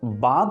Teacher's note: নাসিক্য ব্যঞ্জন দন্তন্য লোপ পেল, আর পূর্ববর্তী স্বরধ্বনি অর্থাৎ অধ্বনি দীর্ঘ ও সানুনাসিক হয়ে হলো আ আ, মানে অয় চন্দ্রবিন্দু আ। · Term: নাসিক্যী ভবন